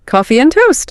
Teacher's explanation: the A and the D just like evaporate. >> They're gone.